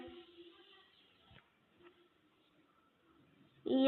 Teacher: इया का उच्चारण स्थान तालु से है। यह ताल्यव वर्ण है।